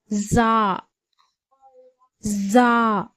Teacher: ஜா வினுடைய மகரஜ் பிறப்பிடம் நுனி நாவிலிருந்தும் கீழ் பாற்களின் நடுவில் அதாவது மேல் கீழ் பற்களின் இடையிலிருந்தும் ஜா உடைய உச்சரிப்பு பிறக்கிறது